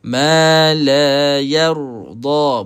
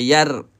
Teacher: Yar, kita bulatkan mulut. Nak bantu kita baca dengan tebal huruf ra, kita bulat sikit mulut.